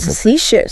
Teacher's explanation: emphasis on the second syllable